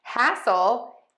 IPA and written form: ˈhæsəl (hassle)